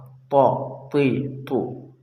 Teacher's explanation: تو ادا ہوتا ہے وہیں سے جہاں سے تا ادا ہوتا ہے، یعنی زبان کی نوک اور ثانویہ کی جڑ، زبان کی نوک اور ثانویہ کی جڑ، مگر یہ تھوڑا موٹا ہوگا، تو تا پتلا ہوگا اور یہ تو موٹا